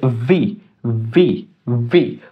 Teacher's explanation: উপরের দাঁত নিচে ঠোঁটের সাথে লাগবে